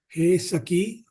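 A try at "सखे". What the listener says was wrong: No, not Hey. There's no Hey.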